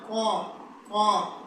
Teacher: قا، قا، یعنی جو قوا لٹک رہا ہے اس کے ساتھ کا جو حصہ ہے ہمارا جس کو ہم تالو بولتے ہیں، تو اس تالو کے ساتھ ہماری زبان کا لاسٹ والا جو حصہ ہے وہ جب ملتا ہے تب جا کے موٹا قاف ادا ہوتا ہے